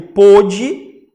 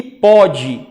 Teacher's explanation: pôde, com acento com o O fechado, né? É a terceira pessoa do plural do pretérito perfeito do indicativo, e pode, sem acento, pronúncia aberta, é o presente do indicativo, tá?